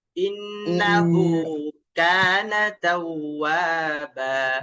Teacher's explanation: কানা তাওয়াবা, নাতে কোনো টান দেওয়া যাবে না। ইন্নাহু কানা তাওয়াবা, ইন্নাহু কানা তাওয়াবা নাতে কিন্তু সামান্য টান চলে আসে।